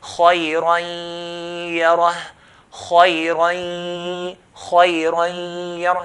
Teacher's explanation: So I'm pronouncing the ya, pronounce the ya from the mouth, and the ghunna, the sound from the nose.